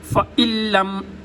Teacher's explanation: یہاں پر کوئی حرکت نہیں ہے، خود ساکن ہے نون، تو اب اس سے پیچھے حمزہ ہے، حمزہ کے اوپر حرکت ہے زیر کی، تو اب اس حرکت کو اس شد کے ساتھ ملائیں گے تو بیچ میں نون کو سکپ کر دیں گے، نون کو چھوڑ دیں گے